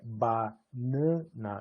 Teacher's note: o primeiro A, ele é oral e ele é mais aberto. A da tônica é uma vogal reduzida e nasal, e a última vogal é uma vogal pós-tônica, bastante reduzida do ponto de vista articulatório, centralizada e tal, mas não é nasal.